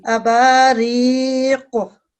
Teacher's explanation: इसमें कॉफ जो है ना, ये थिक साउंड वाला लेटर है, इसकी आवाज को मोटा करके पढ़ते हैं